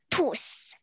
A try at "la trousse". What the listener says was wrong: You said you, I think you guys are saying tousse. You have to put the R in between.